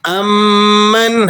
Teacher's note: نون ساکن پر آپ غنہ نہیں ادا کریں گے، اس کے بعد حروف حلقی آ گیا